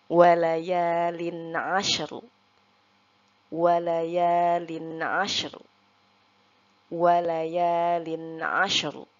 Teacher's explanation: Nah, di sini yang kita tambahkan suara e-nya itu pada huruf shin supaya membunyikan huruf ro-nya. Oke, huruf ro-nya di sini kita baca tebal karena huruf ro sebelum huruf ro terdapat huruf yang berharokat sukun dan sebelumnya huruf yang berharokat fathah